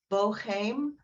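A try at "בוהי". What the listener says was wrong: There's no M there, right?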